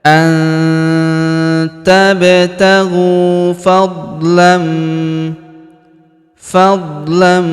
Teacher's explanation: Huruf ghu kita panjangkan 2 harokat karena wawu sukun di depannya, alifnya tidak dibaca. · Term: panjangkan dua harakat